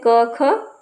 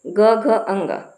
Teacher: जैसे अघोष में क ख और घोस में ग घ अंग